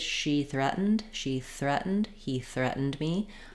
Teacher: if I'm starting with she or he, something with a vowel, I'm going to just have that smooth transition from vowel to TH